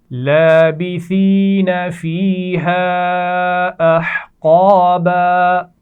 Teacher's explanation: سا کے مخرج کا خیال رکھیے، نرمی سے پڑھا جاتا ہے. اس میں سین کی طرح سیٹی نہیں ہونی چاہیے